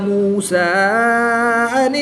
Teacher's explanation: حمزہ ساکن ہے تو اس کو ہم جھٹکا دے کر پڑھیں گے. کھڑی زبر کے بعد حمزہ دوسرے کلمے میں ہے تو یہاں پر مد منفصل ہوگی، 2 سے 3 الف تک کھینچ کر پڑھیں گے